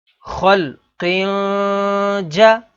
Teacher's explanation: تنوین کے بعد اگلا حرف جیم ہے، جیم حروف اخفا میں سے ہے تو یہاں پر اخفا یعنی غنہ کر کے پڑھیں گے۔